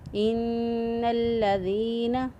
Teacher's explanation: ان الذین، دال زیر یا دی، دال کو نرمی سے ادا کیا، یا مدہ ہے، ایک الف کے برابر اس کو بھی لمبا کیا، اور لام کو مضبوطی اور قوت کے ساتھ اس لیے ادا کیا کیونکہ اس کے اوپر شد موجود ہے، تو شد والے حرف کو مضبوطی اور قوت کے ساتھ ادا کرتے ہیں۔